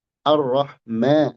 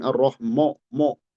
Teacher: Kalau rumus sederhananya vokal A itu A jangan jadi O gitu. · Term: tipis